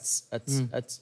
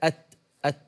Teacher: يعني التاء مثلا همسها يختلط بالسين، التستس بتطلع منك أتس أتس أتس هكذا، حاول لا همس مع شدة أت أت ما يطلع هذا الصوت المشابه للمختلط بالسين.